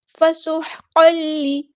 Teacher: ہم، یہاں پر میم ساکن پر اظہار شفوی ہوگا، فسحقا لی، سین کی سیٹی ہم نے واضح کرنی ہے ، ہا کو مستحرک مڈل تھروٹ سے ادا کرنا ہے، قاف · ہوگا، فسحقا لی، سین کی سیٹی ہم نے واضح کرنی ہے، ہا کو مستحرک مڈل تھروٹ سے ادا کرنا ہے ، قاف ہمارا ہیوی لیٹر ہے پورا ادا کریں گے، قاف